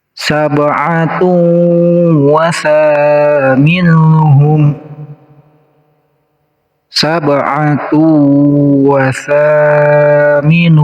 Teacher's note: ada ba yang sukun, ini namanya qalqalah, harus dipantulkan cara bacanya